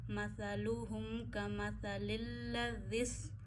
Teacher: यानी आप अपनी ज़बान की नोक के ऊपर वाला हिस्सा, ज़बान का सिरा ऊपर के दांतों के आखिर पे लगाते हैं और सा नरम पढ़ते हैं